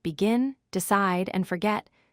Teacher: For two-syllable verbs like begin, decide, and forget, stress the second syllable. Say begin with emphasis on the second part. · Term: Word stress